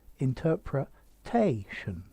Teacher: the stress has moved interpretation so it's on the penultimate syllable